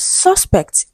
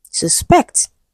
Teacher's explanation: if it is a noun, it is stressed on the first syllable. If it is a verb, the stress shifts to the second syllable.